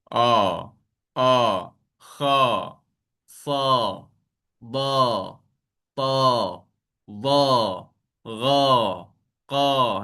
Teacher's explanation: Jadi itu adalah huruf yang disebut dengan sifatnya sifat istilak. Okey. Yang mana pangkal lidah kita ter angkat.